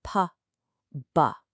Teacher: To make both of these sounds, you press your lips together to completely stop the air. But for the P in Pat, there's no vibration.